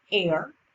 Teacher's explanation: the h is mute meaning it has no sound